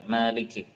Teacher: membaca dengan ma-nya dengan panjang